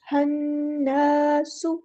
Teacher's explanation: एक अलिफ के बराबर, या अय्युहन्नासु, हन इस तरह रुकना है, अलिफ मद आ गया तो लंबा भी करना है, एक अलिफ के बराबर यानी 2 काउंट्स , हन्नासु इस तरह लंबा भी करना है, रुकना भी है